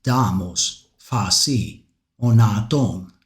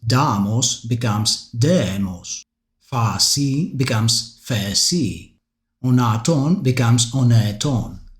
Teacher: Mycenaean Greek also retains the long a in words such as damos, phasi, onaton, which later transforms into the long e in the Ionic Attic dialect. For instance, damos becomes demos, phasi becomes phesi, onaton becomes oneton.